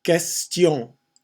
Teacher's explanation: QU is a K sound, again with less air blown out.